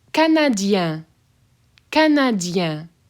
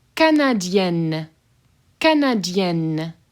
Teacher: So you should be able to hear the difference between Canadien, open N, and Canadienne, hard N